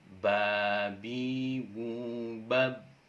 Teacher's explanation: Ketika huruf ba ini berharokat sukun, maka dia harus dipantulkan. Dia harus dipantulkan seperti bola kasti misalnya yang kita lempar ke dinding yang keras, maka dia akan kembali. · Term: memantul